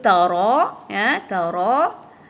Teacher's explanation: bila dia berbaris fathah ra ataupun baris depan ru, maka di sini sifat ra adalah tebal